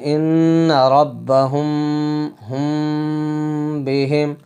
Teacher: ٹھیک ہے، اسی طرح اخفاء شفوی، اخفاء کے معنی بھی ہم جانتے ہیں کہ چھپا کر پڑھنے کے آتے ہیں۔ تو میم ساکن کے بعد اگر اگلا حروف با ہو تو ناک میں چھپا کر اخفاء کر کے پڑھیں گے